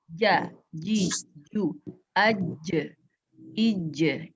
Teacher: Tidak keluar hembusan nafas, itu jahar.